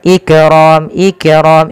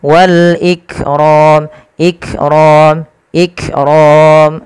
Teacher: Sifat kaf itu ada sifat namanya syiddah. Syiddah itu apa? Tertahannya suara. Yang kedua dia sifatnya hamas, mengalirnya nafas. Maka langkah pertama tahan dulu suaranya ik, baru alirkan nafasnya.